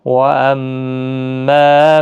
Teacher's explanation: وَأَمَّا میم مشدد پر غنہ ہوگا، مع الف مدہ بھی ہے، واو مدہ ہے، باقی کسی بھی حرکت والے حرف کو کھینچنا نہیں.